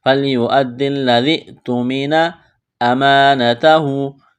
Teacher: یہاں دال اور لام کے اوپر تشدید ہے تو دونوں میں سختی کریں گے، دونوں کو دبائیں گے